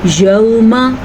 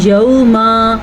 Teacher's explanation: میم کو لمبا نہیں کرنا